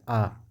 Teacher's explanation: कंठ के बिना बोल ही नहीं सकते आप आ को